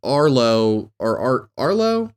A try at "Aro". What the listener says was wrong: Aro, there's no L. It's just Aro.